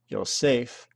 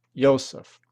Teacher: the Greek accent is on the last syllable, yay, while the Latin accent is on the next last syllable, Yseph.